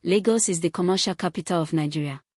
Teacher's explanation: The falling tone signals completion and certainty.